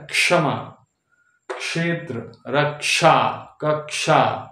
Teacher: S H हो गया तालाब श मुर्धन्य श है ना तो इसमें आधा क और मुर्धन्य श मिला के क्ष होता है